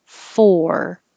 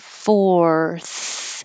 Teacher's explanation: the vowel is or so you have to round your lips and curl your tongue back for the r